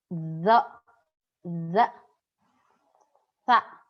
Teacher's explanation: Dari bainal asnan, antara gigi al-ulya wa sufla, gigi atas dan gigi bawah, dan ada zalakul lisan, ujung lidah.